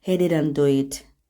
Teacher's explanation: Pauza yoxdur, hamısını birləşdirik bir-birinə və ona görə də köməkçi feilin sonundakı, yəni didn't feilinin sonundakı T düşür və didn't sözü do-ya birləşik şəkildə səslənir